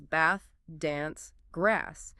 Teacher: >> And you'll often notice specific vowel shifts like in words such as bath, dance, grass. In many southern British accents, it's a longer a sound.